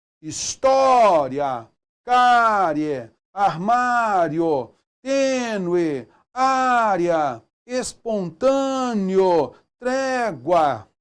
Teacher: E você vai notar que são ditongos orais crescentes. Semivogal mais vogal